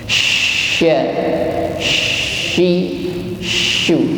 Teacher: Lidah bagian tengah naik ke langit-langit atas. · Jadi pastikan ketika mengucapkan shin, satu ada udara yang keluar dengan deras. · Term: huruf shin, sifat tafasyi